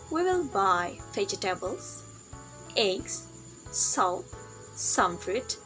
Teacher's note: Rising intonation here is a signal that we haven't finished yet our speech we haven't finished yet our sentence so we use Rising intonation · we use raising intonation when we say we will buy vegetables eggs salt some fruits so Rising intonation here is a signal that we haven't finished